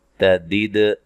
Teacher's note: دال کو ہلا کر پڑھنا ہے، حروف قلقلہ میں سے ہے